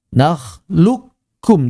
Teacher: Maka menghilangkan 100% suara qof hadfan kamilan. 100% bil kafi musyadadah. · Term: idgham kamil